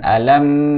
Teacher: mim sukun ketemu ta namanya izhar syafawi tidak boleh ditahan